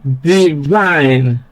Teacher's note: Stress is on the second syllable, vine, because that syllable contains a diphthong I, while the first syllable contains a short vowel